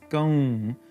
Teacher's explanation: it's a nasalization of the vowel that's there so here it's gong where the uh is being nasalized so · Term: anuswara